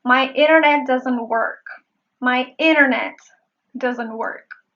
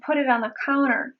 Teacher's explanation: I chose to say the silent T version because in a fast speech, it is more convenient.